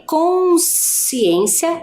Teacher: já em consciência Eu apenas né ouço ali o valor sonoro o som do S